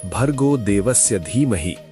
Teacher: धी लंबी होनी चाहिए, 2 मात्रा।